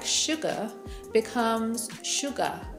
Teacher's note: one of the biggest differences between Jordie and RP is that the RS at the end of words aren't pronounced and tend to be pronounced as ah instead